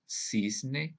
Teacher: Pero en el español de América no sucede eso. Pronunciamos igual la C, la S y la Z. Por ejemplo, decimos cisne, que se escribe con C al inicio.